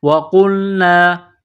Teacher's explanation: وَقُلْنَا، واو زبر و، قاف نقطوں والا قاف ہے، بڑا قاف، اس کو موٹا کرنا ہے